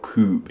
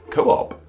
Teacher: those two O's next to one another don't make a singular oo sound.